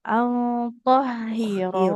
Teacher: haknya nggak panjang karena kasro nggak ketemu alif